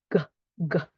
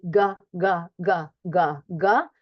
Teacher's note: GG creating the closure of the vocal folds. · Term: onset sound